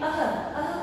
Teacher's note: विसर्ग में अह अह का उच्चारण होता है और आधे ह की साउंड आती है। आधे ह की आवाज आती है।